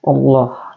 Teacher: Kemudian Allah di sini ada huruf lam jalalah tafhim ya, tebal. Setelah kita sebut inna maka kita sampai ke Allah, maka di sini disebut tebal Allah, dibaca panjang 2 harakat ya teman-teman.